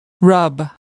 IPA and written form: rʌb (rub)